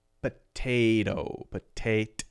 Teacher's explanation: We changed this T to a light D sound.